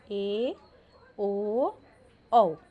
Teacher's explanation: जिन स्वरों को उच्चारित करते समय विवृत की तुलना में मुख भाग कम खुलता है उसे अर्धविवृत स्वर कहते हैं।